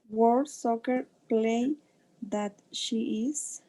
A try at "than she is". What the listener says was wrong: Than, pronunciame esa N siempre, than she is.